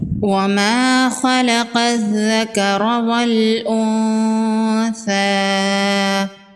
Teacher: وَمَا خَلَقَ الذَّكَرَ وَالْأُنثَىٰ، الف مدہ ہے، ایک الف کے برابر کھینچ کے پڑھیں گے۔ خا اور قاف حروف مستعلیہ میں سے ہیں، دونوں کو پر پڑھیں گے۔ قاف کو ذال کے ساتھ ملائیں گے، حروف شمسی ہے، الف اور لام کو نہیں پڑھیں گے۔